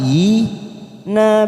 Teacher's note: ada kasr yang berdiri kita panjangkan dua harakat